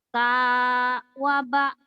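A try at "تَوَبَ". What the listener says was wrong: Sudah benar tapi jangan putus. Nih, jangan gitu.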